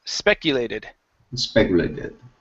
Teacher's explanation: Put the stress at the beginning of the word.